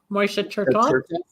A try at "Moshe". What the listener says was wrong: It's not Moishe, it's Moshe, the Hebrew pronunciation, not the Yiddish, right?